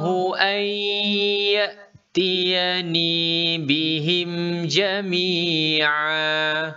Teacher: Nun dimasukkan ke dalam huruf ya dan didengungkan bacaannya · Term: Idgham Bighunnah